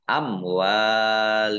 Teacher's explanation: Kumnya dibaca wakof dan dibaca pendek karena tidak ada tanda panjangnya.